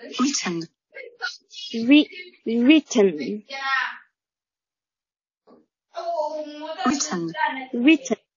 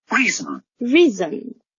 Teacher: written, written, written 是短元音后面这个 reason, reason, reason 后面加了个长元音